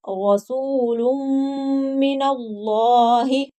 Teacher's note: یہاں لام جو ہے وہ موٹا کر کے پڑھا جائے گا کیونکہ اس سے پہلے حرف کے اوپر زبر ہے